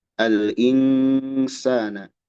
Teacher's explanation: ada ikhfa, ada gunah. Ikhfa hakiki. Nun sukun menghadapi sin.